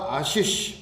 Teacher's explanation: आशीष में पहला शय आएगा, कौन सा आएगा, तालव्य, फिर आएगा मूर्धन्य शय अंत में। यहाँ पर दंते शय आएगा ही नहीं, ये ध्यान रहे।